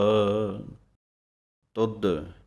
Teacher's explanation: ਧੱਦੇ ਦੀ ਆਵਾਜ਼ ਦੇਣੀ ਹੈ ਭਾਰਾ ਕਰਕੇ ਥੋੜ੍ਹਾ ਜਿਹਾ